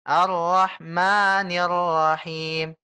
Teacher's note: Mimnya panjang 2 harokat saja, Bu ya.